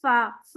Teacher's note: फा पढ़ते हुए आप महसूस करें आपके दांत जो हैं वो होंठ पे लगते हैं, फा, है ना, जी, ऊपर के दांत नीचे वाले होंठ पे लगते वाह, हैं।